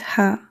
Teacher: It is pronounced softly from the throat. Ha is a light letter.